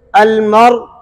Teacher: वो भी आप उसी तरह पढ़ेंगे अलमर, यानी हमजा नहीं होगा, रा साकिन हो जाएगा और रा साकिना में हमने आखिर में होंठ गोल करके इश्माम कर देना है